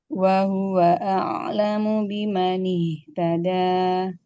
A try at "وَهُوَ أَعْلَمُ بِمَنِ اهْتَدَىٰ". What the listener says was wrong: wahu, lemah. Wahuwa a'lamu biman ihtada. Harokatnya perhatikan lagi ya Om ya. Harokatnya kurang sempurna, jadi suaranya masih sebagian masih tercampur ke hidung. Bisa diatasi dengan menyempurnakan harokat. Fathahnya buka a, i, kasrohnya tadi ya, e, i, sampai lidahnya menempel.